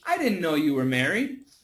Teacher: the N can cancel the T and it can also cancel the D